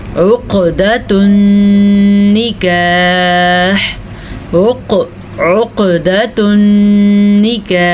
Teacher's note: دیکھ لیں اب وقف کیا ہے، ہا کی آواز آنی ضروری ہے